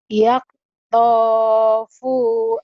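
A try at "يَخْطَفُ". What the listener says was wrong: bukan yaktopu, orang Jawa tuh memang orang Lampung ya Bu ya. Lahir di Lampung kenapa jadi yaktou? Yah, khonya jangan ke ka. Ho-nya kadang-kadang ke ka, go-nya kadang-kadang ke ho di Jawa tuh. Goiril dibaca khoiril.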